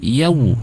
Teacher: Fathah bertemu dengan waw sukun harus bunyinya langsung au, mencucu ya